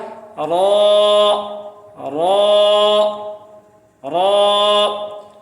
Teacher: دو دانتوں کے مسوڑوں کو زبان کی نوک جب لگے گی، ٹچ ہوگی، تو پھر پڑھا جائے گا را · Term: را کا مخرج